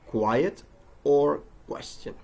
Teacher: a K sound, which is a voiceless velar stop sound, k, put together with a W sound, as in quiet or question.